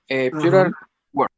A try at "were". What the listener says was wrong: We don't say were. We say were. We don't pronounce the E. Esto, esa última E, no va a sonar.